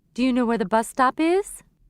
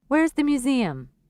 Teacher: the indirect question below has a rising intonation the wh question has a falling intonation do you know where · and falling tones the indirect question below has a rising intonation the wh question has a falling intonation